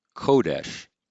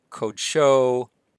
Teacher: And when we add a pronominal suffix, so we're going to add this 3ms pronominal suffix, which is a holem wow, we get rid of the accent. This vowel shortens from a long O to a short O. So that's not a kametz, that's not a long A, that's a short O.